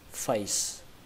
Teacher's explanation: Âm thứ hai các bạn đọc là tờ, tờ nó giống như trong chữ tờ giấy, tờ. Và âm thứ ba các bạn đọc là face, xuống giọng face, kết thúc bằng âm sờ